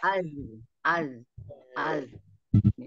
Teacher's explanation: Zal Keluar. lidah bertemu dengan ujung gigi seri atas